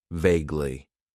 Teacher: It has two syllables and the stress is on that first syllable.